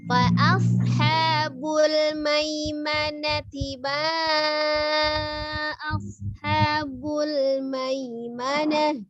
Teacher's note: maimanati tidak ada yang panjang, ma pendek, na pendek, ti juga pendek ya, langsung disambungkan dengan ma, kemudian baru ketemu ma-nya panjang ya. Fa ashabul maimanati ma ashabul maimanah.